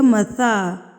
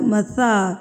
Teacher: آپ کے جو زبان کا کونا ہے وہ آپ کے اوپر والے دانتوں کے مسوڑوں کے ساتھ لگے گا. مسا تو تب یہ نرمی سے ادا ہوگا. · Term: نرم حروف